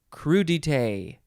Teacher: there's no emphasis on any syllable as far as i can tell it's just crew detail all the same emphasis anyway it is